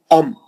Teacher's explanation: دونوں ہونٹوں کا سختی سے مل جانا، وہی اس کا مخرج ہے